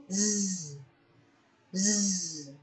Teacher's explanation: Next, we have z, z. There is vibration, and this is an example of voiced consonant.